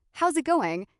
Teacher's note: his voice goes up slightly at the end to show genuine interest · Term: intonation